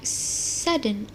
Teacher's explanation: the D transition seamlessly and instantly into the nasal sound N, which is now the big of a syllable.